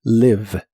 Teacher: La I de esta palabra se pronuncia de manera muy corta y suena ligeramente como E